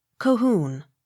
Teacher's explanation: accent on last syllable